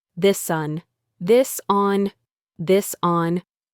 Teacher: In fast speech, the s at the end of this connects to the word on. It becomes one smooth sound.